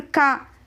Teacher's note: క ఎక్కడ టచ్ అవ్వట్లేదు, కంఠం నుండి పలుకుతున్నాం